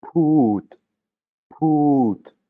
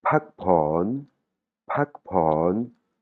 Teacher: il y a de l'air qui sort de ma bouche après le P.